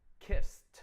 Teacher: S is unvoiced. So you get a t, kissed. Let's do one more.